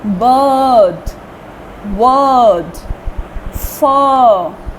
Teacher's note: it is pronounced as broader a, long a